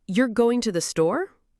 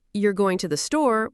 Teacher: with a flat or falling tone, it sounds like a statement